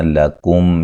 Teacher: میم ساکن کا اظہار ہے اور غنہ نہیں کریں گے